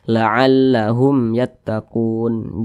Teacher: Nah, kemudian kun dibaca panjang. Ini namanya mad arid li sukun.